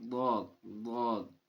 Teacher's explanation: ضاد کا جو مخرج ہے وہ نہ دواد ہے نہ زواد ہے، بیچ کا ہے، گاڑھا ہے